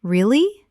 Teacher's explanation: For example, when you ask a question like, really? Your voice goes up slightly at the end. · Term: rising tone